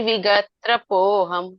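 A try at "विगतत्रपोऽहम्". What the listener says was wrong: विगतत्रपोहम, विगतत्रपोहम। नहीं, मिक्स नहीं करना, त पे एक और त जोड़ना, विगतत्रपोहम। हाँ, विगतत्रपोहम।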